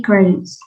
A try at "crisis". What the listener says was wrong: crisis. Yeah, crisis. Not say crises, but crisis.